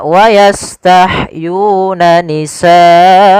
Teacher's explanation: Di sini kita wajib memanjangkan sa sepanjang 4 harokat sebagaimana lafal su'a dan lafal abnaakum. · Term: mad wajib muttasil